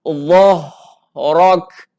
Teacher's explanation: Dhah. Okey, huruf dha ni tekan, huruf ha ni dia bunyi lepas kuat, jelas.